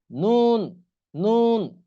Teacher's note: আগা তার বরাবর উপরের তালুর সঙ্গে লাগাইয়া উচ্চারণ হবে কি নুন জিহ্বার আগার উপরের যে তালু আছে তার সঙ্গে লাগাইয়া নুন